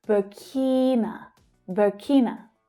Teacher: Burkina, the stress there is on the second syllable.